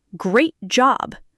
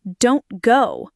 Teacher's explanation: The tongue prepares for the T, then immediately moves to the position for the next consonant without releasing the T sound. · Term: unreleased T